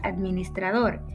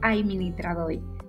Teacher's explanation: En la región del norte tenemos la vocalización de algunas consonantes implosivas, como ocurre con la palabra administrador, que en esta región se pronunciará como administradoi, cambiando la D y R por la I